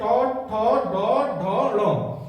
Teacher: ये ट वर्ग के पांचों वर्ण जो है वो मूर्धन्य में आ जाए